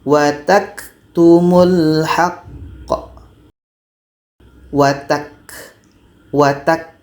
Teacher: itu ada bunyi berangin kita akan tahan dulu watak watak ah setelah kita Tahan baru ada bunyi k ah ada bunyi berangin berangin itu Hamas jadi kita baca dulu syiddahnya Tahan suara baru · Sebelum bunyi k itu ada bunyi berangin, kita akan tahan dulu. Watak. Setelah kita tahan baru ada bunyi k.